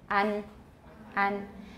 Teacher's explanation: That's a more front A. It's a middle to front A, or central to front A.